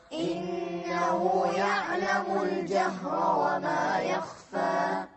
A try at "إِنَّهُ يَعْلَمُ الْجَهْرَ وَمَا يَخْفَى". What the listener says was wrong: طولوا في الغنة أكثر. إنه يعلم الجهر وما يخفى.